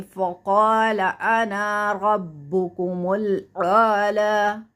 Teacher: لفظ آنا جو ہے نا اس کو لمبا نہیں کریں گے